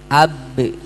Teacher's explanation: Am, ab. Nah, kalau ba pasti punya huruf sifat qalqalah, harus ada pantulan.